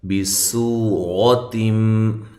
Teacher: سین کو باریک سیٹی کے ساتھ ادا کرنا ہے اور واو مدہ ہے.